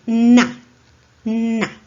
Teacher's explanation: es un fonema alveolar entonces está n es al violar ya es un fonema nasal alveolar sonoro